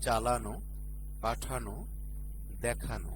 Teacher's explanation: আন বা আনো প্রত্যয়ান্ত শব্দের অন্ত অ ওকার উচ্চারিত হয়